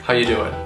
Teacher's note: the most reduced form of this greeting would be to eliminate the word are altogether